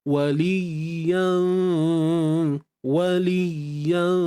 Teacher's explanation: ikhfa Hakiki ikhfa Hakiki kita sembunyikan tanwin di sisi huruf Fa dengung kena ada dalam kadar dua harakat tapi dengung tu mestilah nipis sahaja